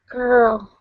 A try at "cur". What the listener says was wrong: Hold the R for just a bit longer. Cur.